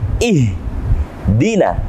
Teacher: Jadi harus jelas, tidak boleh kita membacanya dengan tipis seperti ihdinas sira kurang jelas. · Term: huruf H